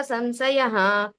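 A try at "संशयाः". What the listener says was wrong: ఈ సంశయాః దీర్ఘం ఉంది.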